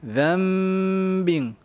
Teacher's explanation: Nun mati, nun sakinah di tukar bunyi jadi mim. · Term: iqlab